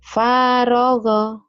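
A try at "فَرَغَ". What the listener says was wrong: parogo, nggak ada yang panjang, parogo.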